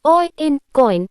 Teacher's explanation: the oi in coin is a diphthong that combines the o sound and the I sound